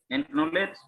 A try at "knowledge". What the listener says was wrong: Knowledge. K-nya nggak dibaca. Knowledge.